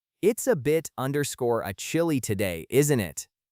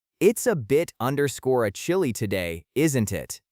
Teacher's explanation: So, they link together to sound like bit {underscore} a. In American English, that T becomes a very soft D sound, almost like beta.